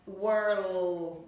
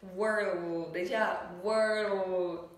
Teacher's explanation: Các bạn nói giống như chữ L bình thường trong tiếng Việt, nhưng mà lúc này không bật ra nguyên âm nữa mà chúng ta dùng chữ L thôi. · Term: âm L